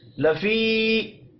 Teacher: یا مدہ ہے، 1 الف کے برابر کھینچ کر پڑھیں گے.